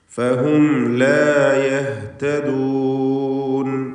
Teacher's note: فصدهم عن السبيل صدهم സാക്കിൻ തമീം ശേഷം ഐൻ അവിടെയും ഇൽഹാർ ഷഫവി മണിക്കാതെ വെളിവാക്കുക فصدهم عن السبيل فهم لا يهتدون فهم لا സാക്കിൻ തമീം ശേഷം ലാമുമാണ് അവിടെയും ഇൽഹാർ ഷഫവി മണിക്കാതെ വെളിവാക്കണം